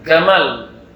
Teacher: Orang Mesir baca jim jadi G.